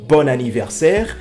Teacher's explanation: puisque bon se termine par haine et anniversaire commence par une voyelle et bien là on fait la liaison